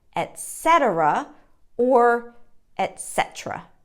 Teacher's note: Syllable stress is on the second syllable